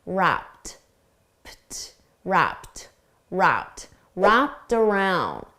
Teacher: For pronunciation, notice wrapped. The ED is pronounced as a soft T